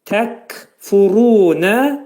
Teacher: Və kəf hərfinin məxrəci dilçəyin sonundadır.